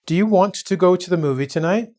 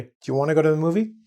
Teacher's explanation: we dropped the T, okay? And we combine want and to. We even change the O to an A to make it easier. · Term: relaxed speech